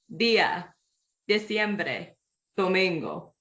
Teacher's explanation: it's more of a th than a D sound um it's kind of like in between